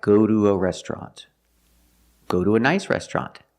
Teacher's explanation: sometimes it's pronounced do when it's after a vowel and before the schwa sound